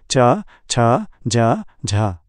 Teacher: घर्षण करते हुए निकलना स्पर्श संघर्षी एफ्रिकेट च छ ज झ पहले स्पर्श और फिर थोड़ा घर्षण